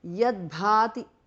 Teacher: Janani, kinchit janani because of sandhi. Tava, yat, tu changes to d because of sandhi.